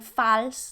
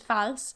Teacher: Even though it's an A spelling there, it's an O sound, like in lock